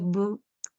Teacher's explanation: El bilabial B, cuando se juntan los labios, es válido para la letra B, es válido para la letra V y es válido para la W.